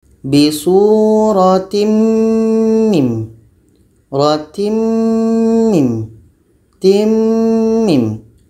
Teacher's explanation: Tanwin bertemu mim, nun mati bertemu dengan mim. Tanwin ini kita masukkan kepada mim. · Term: idgham bi gunnah